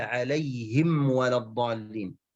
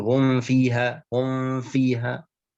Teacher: mim yang bertemu dengan waw dan fa, jangan sampai ikhfa, jangan sampai diikhfakan, tidak jelas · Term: idhar